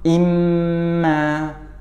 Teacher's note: ketika tasydid maka harus dipanjangkan 2 harokat gunnahnya